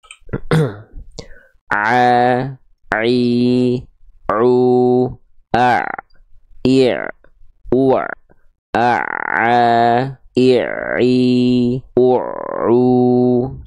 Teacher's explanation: kayak ada suara kretek-kreteknya. Nah, itu bunyi ain sukun tuh itu. · huruf ain dilafalkan dari bagian tengah tenggorokan kita. Jangan terlalu ke bawah, nanti jadi huruf hamzah